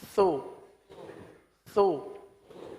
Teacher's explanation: مجہول ہو جائے گا، سے مجہول ہو جائے گا، سی سو، اور پیش میں ہونٹ گول ہو رہے ہیں